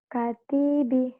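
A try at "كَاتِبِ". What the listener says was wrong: K-nya panjang. Kalau yang kayak begini ada alifnya nih.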